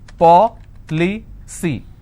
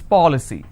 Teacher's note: i need to stress on the third from right which means i will stress on paul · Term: anti-penultimate